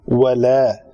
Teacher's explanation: واو کے لیے شفتین ہمیشہ میں کہتا ہوں گول کریں گے. ولا الف پتلا ہے کیونکہ اس کا ماقبل پتلے حروف میں سے ہے لام